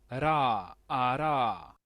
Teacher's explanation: Hay otra R, la que se le conoce como la R flap o la R tap